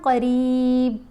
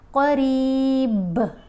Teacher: جب با کو ساکن پڑھیں گے تو کلکلا کریں گے